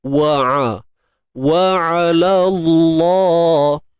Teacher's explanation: Kemudian 'alallah, kalimah Allah ni kita tebalkan, tuan-tuan perempuan. Untuk huruf ain pastikan jauh daripada bunyi hidung lah. Sebab huruf ain ni dia tengah kerongkong.